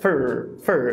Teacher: Eu acho que essa vogal, ela é apagada, ou seja, de novo, temos aí um apagamento. Para mim, ele só fala FR. Fur. É um FR direto sem vogal nenhuma.